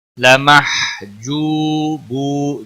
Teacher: ادغام ہوگا بلا غنہ. لمحجوبو جو اور بو دونوں واو مدہ ہیں ایک ایک الف کے برابر کھینچ کر پڑھیں گے